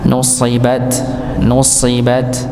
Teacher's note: tetap ditebalkan walaupun sin dan shad sama-sama tempatnya sama. Ujung lidah bertemu dengan gusi bagian bawah, kayak zai juga sama.